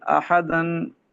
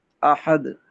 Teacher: وقف کریں گے تو اس کو احد پڑھیں گے، احدن نہیں پڑھیں گے